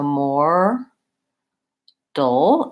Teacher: And then there's a syllabic L at the end of mortal